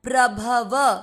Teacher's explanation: भ और व दोनों अक्षर पूरी, दोनों में अ मिक्स करना है